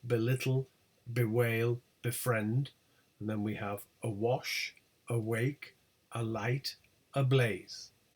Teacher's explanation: they always have stress on the second or later syllable